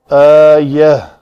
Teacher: تا مربوطہ ہے، ساکن کرنا اس کو، وقف کرنا اس کے اوپر، اس کو ہائے ساکنہ بنا کر پڑھیں گے